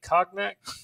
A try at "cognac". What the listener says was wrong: Yeah, hey, you don't have to pronounce it in French.